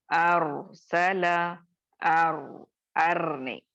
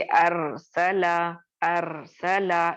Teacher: मैं रॉ को मोटा करके पढ़ रही हूँ। मैं इसे अरसला, अरसला इस तरह से नहीं पढ़ रही हूँ।